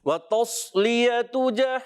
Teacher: सौद को मोटा रखना है · वाव की अदायगी होंठों की गोलाई से, ता को सौद से मिलाएंगे, मगर सौद को पुर रखना है, ता को बारीक रखना है